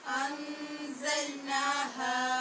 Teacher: ذل کی آواز نہیں ہونی چاہیے، زا میں سیٹی کی آواز پیدا کرنی ہے اور مضبوطی سے ادا کرنا ہے، نا ہا۔ یہاں یاد رکھنا ہے کہ دونوں کی مقدار برابر رکھنی ہے اور ایک الف کے برابر لمبی کرنی ہے۔